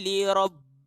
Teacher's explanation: Kita tekan bunyi lam tu, atau kita gandakan bunyi dia.